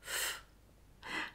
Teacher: For f, press your bottom lip lightly against the edge of your top front teeth. Remember, it's unvoiced. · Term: unvoiced sound f